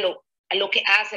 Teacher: For me, one of the things that jumps out here is lo que hace, right? We have that definite glottal stop in there where we wouldn't have that in other dialects of Spanish.